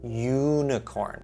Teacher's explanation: We see that it starts with a U, but when we say this word, unicorn, we're actually hearing a Y sound starting the word